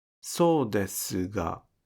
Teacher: Don't devoice the vowel su in so desu ga. In other words, pronounce the u sound in su